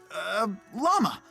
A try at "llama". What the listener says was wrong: pronounces llama as lamau.